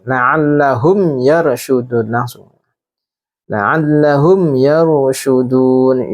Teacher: Pendek, dibaca pendek 1 harokat karena mim sukun bertemu dengan ya. Ya merupakan huruf idhar syafawi.